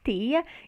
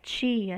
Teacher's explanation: Então, a gente tem as normas do Nordeste, as normas do Sudeste, em que você, por exemplo, nota uma diferença, né, na pronúncia do fonema, esse fonema inicial da palavra tia, né? Então, no Nordeste, vai ser pronunciado como uma consoante alveolar, tia, e no Sudeste como uma consoante africada